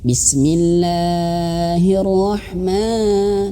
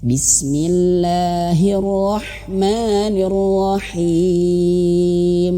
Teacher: panjangnya itu hanya cukup dua harakat saja